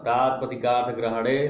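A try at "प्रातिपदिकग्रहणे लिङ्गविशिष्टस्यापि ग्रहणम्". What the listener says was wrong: प्रातिपदिक ग्रहणे मूल तरीका, प्रातिपदिक ग्रहणे, प्रातिपदिक अर्थ नहीं है, क्यों इतना, मतलब प्रातिपदिक अर्थ बहुत याद आता है क्या, कारक का।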